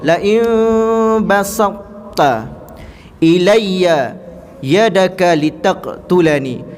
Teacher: Hanya hilang qalqalah daripada huruf ta, sifat isti' dan kekal.